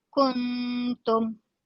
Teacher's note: Hendaklah juga dipastikan tiada unsur suara panjang pada sebutan nun seperti perkataan kuntum dilafaz secara panjang. Kuntum. Kalau panjang kuntum.